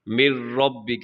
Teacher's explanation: اس میں نون کی آواز کو بالکل ختم کر دیا جائے گا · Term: ادغام